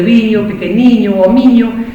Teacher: Entonces, en latín era viquino, y desapareció la N, y en gallego medieval era bizzinho, y desde bizzinho es de donde nace el liño gallego. El liño gallego de viño, pequeniño o miño, viene de una antigua I que estaba nasalizada.